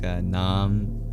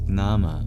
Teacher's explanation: Naam is just nama, but with a schwa deleted.